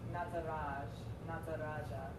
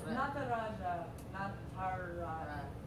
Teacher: you're kind of touching your tongue to the back of your teeth almost when you make your R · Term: rolling R